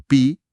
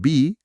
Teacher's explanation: la P como en pi guisante que es sorda, versus la B como en bi abeja, que es sonora